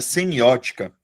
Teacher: Sílaba tônica da palavra semiótica é a antepenúltima.